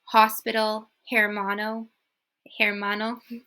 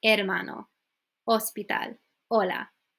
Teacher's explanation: you just drop the H it doesn't exist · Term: silent letter